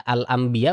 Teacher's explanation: bukan al-am rapat gitu, bukan. Tapi dia ada celah. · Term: furjah